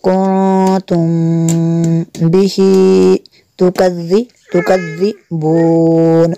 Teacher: میم ساکن کے بعد با ہے، یہاں پہ اخفا شفی ہوگا اس لیے یہاں پہ بھی غنہ کریں گے